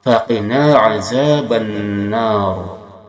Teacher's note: Ro sebelumnya patah dan dia sukun ditebalkan dibacanya, maka pangkal lisan yang dekat tenggorokan kita angkat ketika membaca nar.